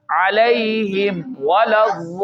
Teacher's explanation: होंठ मिलेंगे पहले फिर खुलने चाहिए तब वाव अदा होना चाहिए